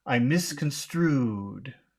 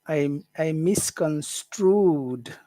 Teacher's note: Hear how long that ooh is? It's very long. It's super long. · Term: Extra long